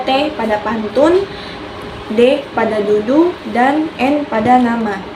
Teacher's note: ujung lidah sebagai artikulator menyentuh kaki gigi atas sebagai titik artikulasi